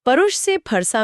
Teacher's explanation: परुष से फरसा में श का स बन जाना भी एक आम बदलाव है।